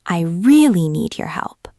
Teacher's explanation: If I stress really, I really need your help. It sounds more urgent.